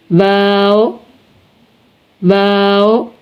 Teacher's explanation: देखें नून नून नून वाओ वाओ दोनों हंठों को गोल करके ना तमाम मिलाने से वाव को अदा करते वक्त दोनों हंठ गोल हो जाएंगे और आपस में बिल्कुल चिपक नहीं जाएंगे।